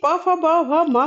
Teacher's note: प फ ब भ म का उच्चारण करते समय दोनों ओठ जो है वो एक दूसरे को स्पर्श कर रहे हैं, जिससे इन ध्वनियों का उच्चारण हो रहा है, इसलिए ये जो है वर्ण ये ओष्ठ्य कहे जाते हैं।